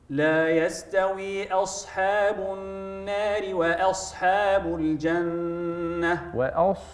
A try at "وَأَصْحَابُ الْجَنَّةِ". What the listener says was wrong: وأصحى ستجد فرق بين نطقي ونطقك في الصاد. وأصحى تفخيم صفير.